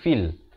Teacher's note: fa pada kasrah bunyi fi, bukan bunyi fe